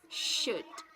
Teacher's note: The sounds sh is pronounced by bringing the back of the tongue closer to the back palate.